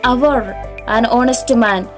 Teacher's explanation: We say hour with a silent H